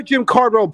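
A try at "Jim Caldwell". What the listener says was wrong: heard an r in there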